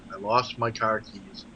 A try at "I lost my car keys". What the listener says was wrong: Not khakis, car keys. I lost my car keys.